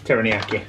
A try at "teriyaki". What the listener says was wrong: There's no N in Teriyaki. I'm very sure. It's not.